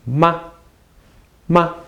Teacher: it doesn't have a tone mark this is called the neutral tone